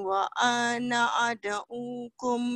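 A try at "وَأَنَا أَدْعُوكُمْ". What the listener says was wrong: wa ana ananya cepat wa ana ad'ukum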